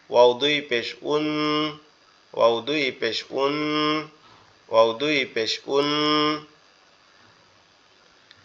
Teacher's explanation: ওয়াও এর ক্ষেত্রে আমাদের দুই ঠোঁট গোলাকৃতি ধারণ করবে।